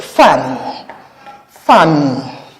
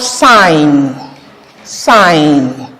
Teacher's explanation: Ending with an alveolar nasal sound.